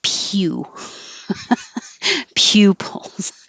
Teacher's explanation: this is a situation where the pu has a y in between